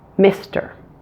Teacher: the first one is that short I sound now that is a very relaxed sound